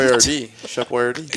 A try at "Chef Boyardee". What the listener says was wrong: You put the emphasis on the wrong syllable, buddy. It's Boyardee. It's Chef Boyardee.